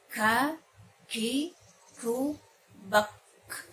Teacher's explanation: Dan ketika sukun, huruf kaf ini di samping syiddah juga dia harus ada hamsnya, ada hembusan udara.